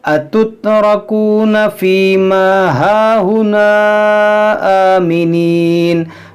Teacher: यहाँ पर जो मद है ये मद मुनफसिल है, अलिफ मद्दा के बाद हमज़ा दूसरे कलमे में है।